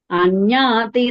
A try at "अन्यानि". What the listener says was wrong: Anyani, not anyati, anyani.